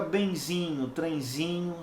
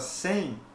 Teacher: aqui é um ditongo nasal por quê Porque repara que é a letra e eu tenho que compreendê-la como um som nasal